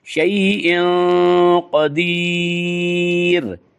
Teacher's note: कदीर की रा को बारीक पढ़ेंगे क्योंकि कदीर की रा से पहले या है और या से पहले ज़ेर है।